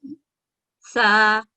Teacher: زبان کو اوپر والے دونوں دانتوں اور مسوڑوں پر لگا کر سانس باہر لیتے ہوئے باریک ادا ہوتا ہے